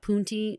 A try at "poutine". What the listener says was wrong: Poutine. Not poon anything.